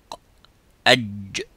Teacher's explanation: So in the wasatul lisan, which is the middle part of the tongue, the middle part touches the roof of the mouth, and the sound stops as exactly as the qaf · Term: jim